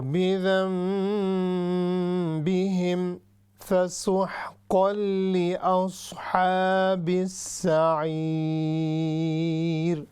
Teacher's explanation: پھر میں نے ناک سے آواز نکالی ہے چونکہ غنہ ہے